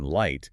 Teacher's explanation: the tip of my tongue is actually touching the ridge behind my teeth for the L sound in light